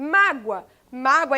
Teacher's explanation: se a penúltima sílaba é mais forte essa palavra paroxítona